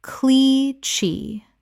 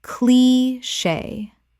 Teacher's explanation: Two syllables with the CH making a SH sound from French.